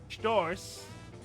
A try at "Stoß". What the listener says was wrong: Without the R. You pronounced it like there is an R.